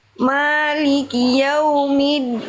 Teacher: Jangan ada percikan nafas dari huruf dal, karena dal sifatnya adalah jahr, bukan hams.